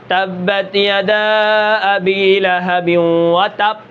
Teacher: قلقلہ میں نے ادا نہیں کیا، وہ پے بن گیا، با ادا ہونی تھی تب یہ پے بن گئی